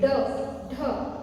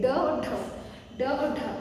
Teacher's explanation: जीभ ऊपर उठकर मूर्धा को स्पर्श करते हुए तुरंत नीचे आती है। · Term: उत्क्षिप्त व्यंजन